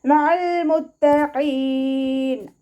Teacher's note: അയിനിൻ്റെ സൗണ്ടിനെ തൊണ്ടയുടെ മധ്യഭാഗത്ത് നിന്ന് തന്നെ കൊണ്ടുവരിക. ഹംസയുടെ സൗണ്ടായി പോവാതെ നോക്കുക കേട്ടോ. അയിന് ചിലരൊക്കെ ഓതുന്ന സമയത്ത് ഹംസയുടെ സൗണ്ടായി കേൾക്കാറുണ്ട്, ശ്രദ്ധിച്ചിട്ട് ഓതുക കേട്ടോ.